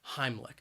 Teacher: on that first syllable heimlich and i think that second syllable even though it's spelled with a c h it's not a ch sound it is more of a k k sound